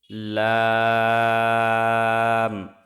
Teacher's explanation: জিহ্বার আগার কিনারা সামনের উপরের দাঁতের মাড়ির সঙ্গে লাগিয়ে উচ্চারিত হয় লাম।